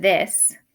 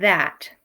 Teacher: we make the th sound by taking our tongue putting it on our teeth and having our throat vibrate